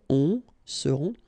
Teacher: Ils seront, final T not pronounced, and then you've got this nasal